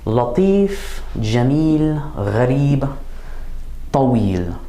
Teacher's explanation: We have a 'fatha' sound, and then a long 'yaa' as the third letter of the word